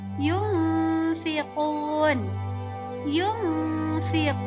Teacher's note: huruf nun matinya disembunyikan dan diganti dengan huruf ikhfa secara samar-samar